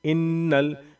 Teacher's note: یہ الف خالی ہے تو ہم فی الحال میں الف کو نہیں پڑھیں گے، نون سیدھا لام میں ملے گا